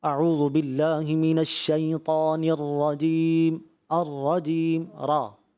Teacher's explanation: را کی ادائیگی میں جو تفخیم تھی، موٹا پر پڑھنا تھا